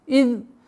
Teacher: Обращаем внимание на произношение из. Межзубное произношение эзаль.